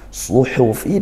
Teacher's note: Suhufi, hati-hati pelafalan huruf shad sekali lagi. Suhufi dan huruf ha dia bersih desisanya, bukan suhufi.